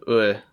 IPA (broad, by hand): ʊɪ